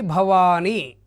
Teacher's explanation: వా దీర్ఘం ఉంది కాబట్టి గురువు అవుతుంది ని లఘువు అవుతుంది